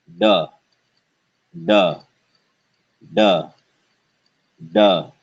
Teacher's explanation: the hard d sound the retroflex d sound with no air